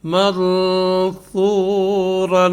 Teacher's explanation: یعنی وقف کریں گے تو را کو ابھی دو زبر والی جو را کے اوپر دو زبر ہیں یہ ختم ہو جائیں گے اور اس کا ایک الف سے بدل جائے گی اس کی آواز